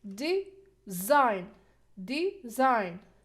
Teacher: So here, we put the stress on the second, design, because it's weak syllable here.